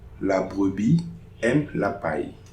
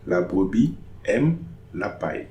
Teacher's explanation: So no liaison between brebis and aime. · you are making a glottal stop or break between the end of one word and the start of the next. Because grammatically, these words are not related enough to require a vocal link. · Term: forbidden French liaison